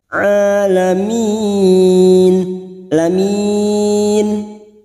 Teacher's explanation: Huruf ain fathah berdiri atau alif kecil di atas 2 harokat kita panjangkan.